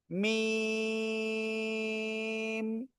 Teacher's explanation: দুই ঠোঁট, দুই ঠোঁটের শুকনো জায়গা থেকে উচ্চারিত হয়।